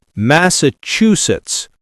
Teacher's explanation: Four syllables. Stress on chew.